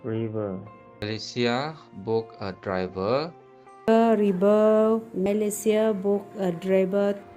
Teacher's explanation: The V in ver for both word is replaced with B. So, in the Iban language, there's lack of V sound entirely. Instead, it substitutes V with the word B or in some certain cases, W.